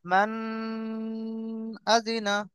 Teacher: এই নুনকে নাকের মধ্যে তুলে একালি পরিমাণ ধরে থাকতে হবে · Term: গুন্না